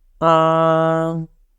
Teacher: the first tone goes flat but the second tone goes like this ah that means the